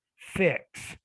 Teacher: the x typically breaks into two separate sounds right in this case the k and the s